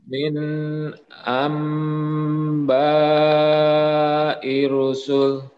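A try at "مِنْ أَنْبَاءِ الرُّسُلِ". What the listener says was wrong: ada tasydidnya. Ir-rusul.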